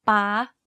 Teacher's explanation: you can hear that my pitch went high when saying this word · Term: high tone